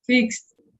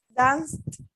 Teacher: The verbs that we pronounce with T at the end, voiceless sounds.